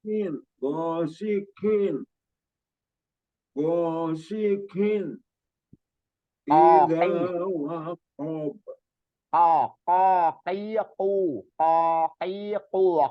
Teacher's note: intinya suaranya agak di dalam agak di dalam jadi bukannya keluar dari apa ujung lidah atau bibir gak engak terlalu keluar dia lebih di dalam k koki koki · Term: Qin